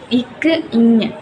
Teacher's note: இது நாவின் முதல் பகுதி அன்னத்தின் அடிப்பகுதியை பொருந்துறதுனால இது உருவாகுது